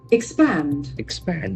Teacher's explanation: There are two syllables and the accent falls on the second syllable.